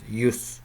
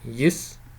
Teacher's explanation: Okay, so there are two different kinds of pronunciations, and okay, with a rounded vowel or with an unrounded vowel, so it can represent a rounded y and a rounded vowel, and or a y and an unrounded vowel